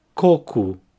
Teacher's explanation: here the emphasis is in the first syllable, coco, and the O at the end has an U sound, cu. So the full word for coconut again, coco.